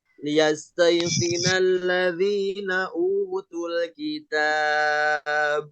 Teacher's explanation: karena kita habis napas, mau berhenti, otomatis ba-nya jadi sukun, jadi mati. Maka ketika ba itu dimatikan, menjadi mad arid disukun.